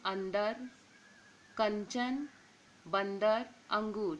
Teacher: अनुस्वार का उच्चारण केवल नासिका से होता है। यहाँ व्यंजनों के 5 वर्ग के अंतिम वर्ण के स्थान पर आता है, तब इसका रूप बिंदु होता है, जैसे अंदर, कंचन, बंदर, अंगूर।